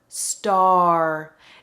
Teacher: So it starts as ah, and it ends in R, star. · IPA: /ɑɹ/